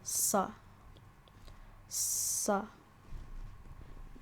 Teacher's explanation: it's basically sa, but you have to create more space in the back of your throat, and do a similar motion, similar to if you were trying to pretend to have a deeper voice. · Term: sod